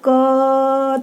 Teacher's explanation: यदि हम क का उच्चारण करेंगे तो क के साथ अ की ध्वनि भी मुख से निकलती है।